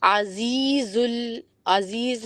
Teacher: اس کے بعد مہیمن العزیز العزیز میں بہت جنرسلی آپ نے زا میں وائبریشن دینی ہے.